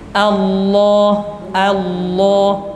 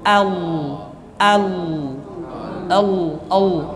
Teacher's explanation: jadi setelah A itu lamnya sudah langsung tebal all all all allnya sudah tebal yaah jadi sama caranya sama